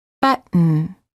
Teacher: Hold the T as in but, and then add an N without releasing the tongue from the gum ridge. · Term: T plus N sound